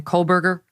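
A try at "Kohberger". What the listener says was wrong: It's Kohlberger, so no L, Kohlberger.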